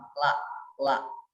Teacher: Ketika kita mengucapkan lam, la, maka ujung lidah kita ini kemudian diangkat bertemu dengan gusi ya, gusi gigi seri bagian atas